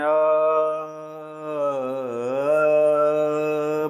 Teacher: आ तीन नहीं पढ़ना है। मतलब अ को इतना बोलना है कि तीन पलक झपकने का समय लगे। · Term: प्लुत